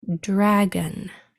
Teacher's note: the hard part is going to be hearing that schwa sound that's almost to the end, because that sound really easily disappears into the sound next to it